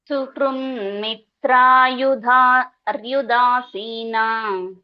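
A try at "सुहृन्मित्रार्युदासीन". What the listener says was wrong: ಸುಹೃನ್ ಮಿತ್ರಾರ್ಯುದಾಸೀನ. ಮಿತ್ರಾರ್ ಅಂತ ಬರ್ಬೇಕು, ಅರಿ ಬರುತ್ತಲ್ಲ.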